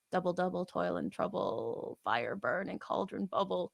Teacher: And then for our magical characters, we get Trochaic Tetrameter, which is the opposite of an iamb. It's stressed then unstressed, and it's only 4 feet, so 8 syllables.